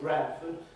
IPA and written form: ˈbrædfəd (Bradford)